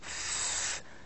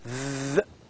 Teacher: Because there is a blockage, but at the same time we have a very narrow passage, and you can feel the friction wrapping while saying f, v. F as a sound is voiceless, and v as a sound is voiced. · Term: fricative